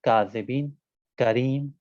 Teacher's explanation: آخر زبان سے ہلکا اور ذرا سا آگے کی طرف زبان کے حصے کو تالو سے جب ملائیں گے تو کاف ادا ہوگا